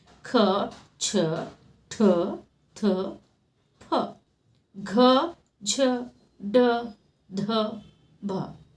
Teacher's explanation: ಹೆಚ್ಚು ಉಸಿರಿನಿಂದ ಉಚ್ಚರಿಸಲ್ಪಡುವ ವ್ಯಂಜನಗಳಿಗೆ ಮಹಾಪ್ರಾಣಾಕ್ಷರಗಳು ಅಂತ ಹೇಳ್ತಾರೆ